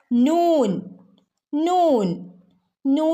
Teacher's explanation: നാവിന്റെ അറ്റം മേലെ മുൻപല്ലുകളുടെ മുരട് ഭാഗത്താണ് തട്ടുന്നത്